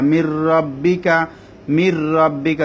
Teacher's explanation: গুন্না ছাড়া নুনটা র মধ্যে ঢুকে যাবে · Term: ইদগামে বেলাগুন্না